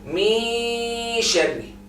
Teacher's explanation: whenever it's hidden, we are going to have a trace of the noon, which is the gunna